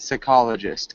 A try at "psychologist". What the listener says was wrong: It's more of an I sound, psychologist.